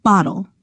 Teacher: Instead of pronouncing a vowel before the L, you go straight from the consonant to the L. To make the syllabic L, position the tongue as you would for the regular L sound, with the tip of the tongue touching the ridge behind the upper front teeth, but don't pronounce a preceding vowel.